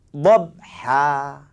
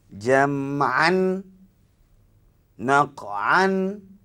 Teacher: kita wakaf kita berhenti hilang bunyi baris dua ni tinggal baris satu kemudian digantikan pula dengan satu baris lagi untuk jadi Mad panjang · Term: Mad iwad